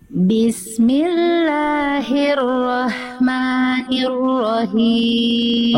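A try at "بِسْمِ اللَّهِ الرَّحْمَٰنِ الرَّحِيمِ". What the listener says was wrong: ro yang kedua Bunda Jelaskan tetap Jelaskan getarannya ro yang pertama sudah bagus ro yang kedua kurang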